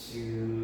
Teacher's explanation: 우리가 즈 한번 발음해보면 즈를 발음할 때 즈를 딱 발음하기 위해서는 공기가 한순간 딱 멈추는 과정이 있어. 즈 이렇게 한순간 즈 발음 바로 직전에 공기가 완전히 막히는 과정이 있어. 어디선가 막히다가 얘가 나올 때 파열듯이 탁 터지면서 나오는 게 아니라 즈 하면서 양 어금니 사이로 마찰되듯이 즈 이렇게 나오는 거 확인할 수 있죠. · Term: 파찰음